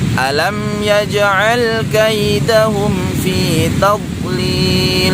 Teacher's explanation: huruf dot yang sukun tidak boleh dipantulkan karena huruf dot ini bukan termasuk huruf qalqalah ya.